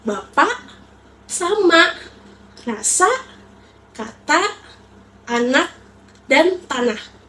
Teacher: Ciri artikulasinya itu mulut terbuka lebar, lidah di posisi depan, dan ruang resonasinya besar. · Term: vokal A